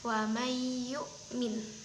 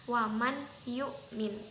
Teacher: ada diberi tekanan sedikit kepada huruf setelah nunnya